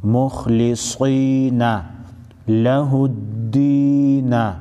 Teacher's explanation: خا او صاد چې دي دا حروف مستعلیه کې دي غټ په ویل کېږي